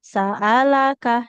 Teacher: Sa'alaka, hamzahnya nggak boleh panjang. Sa'alaka. Nah, fathah nggak ketemu alif nggak boleh panjang.